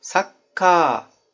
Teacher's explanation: Mesela Sakka-nın sonunda ka var. Ka'nın a'sını uzatacaksınız.